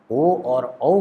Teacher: ओ और औ का उच्चारण स्थान कंठ और ओष्ठ दोनों होगा। मतलब ओ और औ ये दोनों कंठोष्ठ वर्ण कहे जाएंगे और व के लिए दंत और ओष्ठ ये दोनों मिल करके उच्चारण स्थान बनाते हैं, तो इसलिए कहा गया वकारस्य दंतोष्ठम, दंत और ओष्ठ इनका ये उच्चारण स्थान है किस अक्षर के, तो व के।